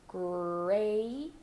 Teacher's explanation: start with your lips rounded bring your tongue all the way back for the American R